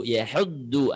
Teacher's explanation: Huruf yang dibaca dengan isti'la atau suara menebal dengan mengangkat pangkal lidah itu adalah huruf do yang ketiganya. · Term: huruf dod